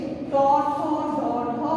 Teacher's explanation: এবং এই বর্ণগুলো উচ্চারণের নিয়ম হচ্ছে যে আমাদের জিভের যে অগ্রভাগ রয়েছে সেই অগ্রভাগ উল্টিয়ে মূর্ধার সাথে স্পর্শ করে এই বর্ণগুলো উচ্চারণ করতে হয়, সে কারণে তাদেরকে মূর্ধন্য বর্ণ বলা হয়।